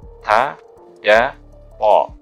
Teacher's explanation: ujung lidah dengan pangkal gigi seri atas